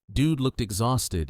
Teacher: Dude looked exhausted is fast with looked blending into exhausted.